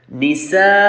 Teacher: As soon as you pronounce the Hamza after the mad letters, this mad will be stretched up to the 4 haraka